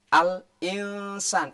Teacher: Ketika nun mati bertemu dengan sin, nah ini harus samar sinnya. Al-insan tidak boleh, al-insan tidak boleh. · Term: ikhfa